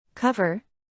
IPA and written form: ˈkʌv.ər (Cover)